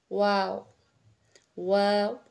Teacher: आपने होठों की गोलाई से अदा करना है आपके जो होठ है उस उसको गोल रखना